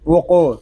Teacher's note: قاف حروف مستعلیہ میں سے ہے، اس کو پر پڑھیں گے، قاف ساکن ہے، اس کو قلقلے کے ساتھ ادا کریں گے